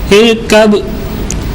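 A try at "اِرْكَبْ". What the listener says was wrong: کلکلہ تھوڑا ظاہر کیجیے. ارکب.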